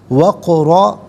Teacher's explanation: وفی آذانہم وقرا، یہاں وقف پڑھیں گے تو وقرا پڑھیں گے، قاف ساکن ہے لیکن حرف قلقلہ ہے تو آواز لوٹتی ہوئی محسوس ہونی چاہیے، را پر 2 زبر کی تنوین ہے تو را کو پر کر کے پڑھیں گے